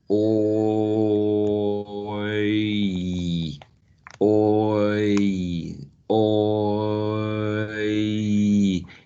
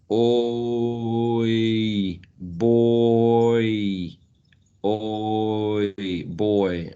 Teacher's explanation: If you do it in slow motion, you actually can, or you would be able to perceive your tongue moving from the back towards the front. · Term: diphthong